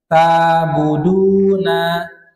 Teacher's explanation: ain termasuk huruf yang mengalir. Mengalirnya dia dengan tawassut ya. Bukan mengalir rokhawah. Dia mengalir tawassut dia.